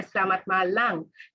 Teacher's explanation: in Sri Lanka, there is the insertion of a final nasal